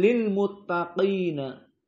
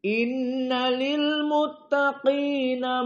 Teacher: maka di sini ada Q dan Q dari huruf almufakhamah sehingga ayat ini ayat ke-31 ini dibaca dalam keadaan muraqaqah kecuali Q sehingga ada tafkhim